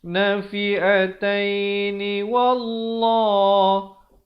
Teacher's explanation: Lafz jalalah di sini dibaca tebal 2 harakat.